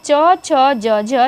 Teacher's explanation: च छ ज झ, यह तालव्य व्यंजन है